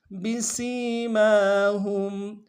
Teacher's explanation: سین کی سیٹی باریک ہوگی، سین کو یا کے ساتھ ملانا ہے ، یا مدہ ایک الف مقدار میں سین کو کھینچیں گے،